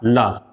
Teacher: जिनके उच्चारण में हवा हमारे जीभ के अगल बगल से निकलती है, उसे पार्श्विक व्यंजन कहते हैं।